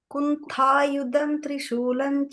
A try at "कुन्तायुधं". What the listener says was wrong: Yeah, not the tha doesn't get the emphasis. Just the first Kuntayudham. Da is the fourth number.